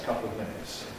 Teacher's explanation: couple ends in a syllabic L, but because it's followed by a schwa in the weak form of of, it becomes compressed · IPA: [ə ˈkʌpləv ˈmɪnɪts]